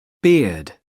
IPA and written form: bɪəd (beard)